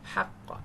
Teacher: হাটা একটু গলা মোটা করবেন, হক চাপ দিতে হবে, মোটা মানে চাপ।